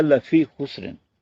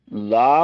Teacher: تو اس کو لام زبر لا، اس کی آواز آدھی ہے، تو کہیں غلطی سے تھوڑا سا لمبا کر لیا جائے، لا پڑھ لیا جائے تو معنی ہی بالکل الٹ ہو